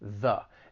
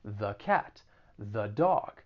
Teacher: i said it with the schwa sound which is an uh sound and it's definitely weaker the and typically people might say the before a consonant sound